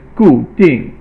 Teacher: Gu is fourth tone or falling tone, and ding is fourth tone or falling tone